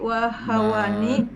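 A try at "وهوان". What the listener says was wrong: pakai tanwin ya? Wahawanin pakai tanwin.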